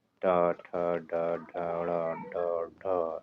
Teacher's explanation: कठोर तालू अगले भाग से ट निकलता है ये तालू के अगले भाग से यहां से ट ठ ड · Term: मुर्धा, मूर्धन्य